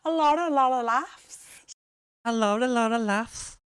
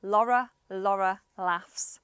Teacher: she's saying a lot of laughs. But she's changing that T from lot to an R.